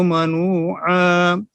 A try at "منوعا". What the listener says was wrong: عین صاف کریں، منوعا. عین صاف نہیں ہوا.